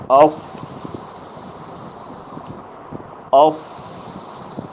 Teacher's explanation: ہمس کی وجہ سے اس میں آواز مخرج میں کمزوری کے ساتھ ٹھہر رہا ہے، جس کی وجہ سے سانس جاری ہے۔